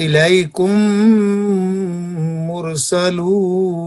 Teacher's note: جی number 1 ادغام، میم ساکن کے بعد دوسری میم آ جائے تو پہلی میم کو دوسری میم میں ملا کر مثل ایک میم مشدد کے غنہ کے ساتھ ادا کی جائے گی